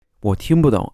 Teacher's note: normally 不 is pronounced in the fourth tone, but when it comes in a phrase with a complement like this, it's unstressed. So it's not pronounced with a particular tone.